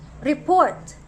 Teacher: if you are referring to an action word for the word report the stress should be on the second syllable and not on the first it becomes report which means you are